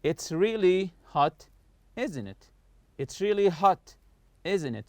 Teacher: So I'm not raising my voice in the question tag here. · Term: falling intonation